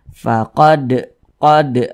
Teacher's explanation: apabila dia sukun maka cara membacanya itu dipantulkan maka kita pantulkan faqod qod mantul dan ini termasuk kepada Qalqalah